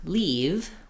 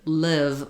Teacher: Our E vowel that we were looking at, the tongue fills up all of the mouth. The I vowel, the tongue is a little lower and more relaxed.